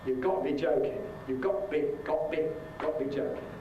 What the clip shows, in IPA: ˈgɒʔ